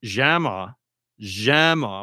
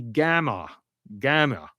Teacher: in Egyptian Arabic the gimm is often pronounced as a G just like it is in Hebrew. So the word for university in Palestinian Arabic is jama jama with a j but in Egypt it would be gamma gamma like that.